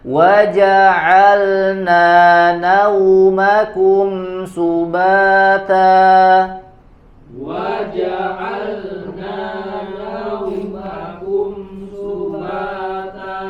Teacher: Jelaskan di huruf lamnya tidak melebur ke huruf nun yang ada di depannya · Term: lam dengan sukunnya